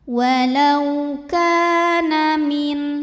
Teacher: Walau ka mad tabi'i dhahiri karena ada alif sebelumnya baris fathah, maka huruf kaf dipanjangkan 2 harokat